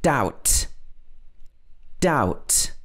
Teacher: b followed by a t and in this kind of situation often the b is not pronounced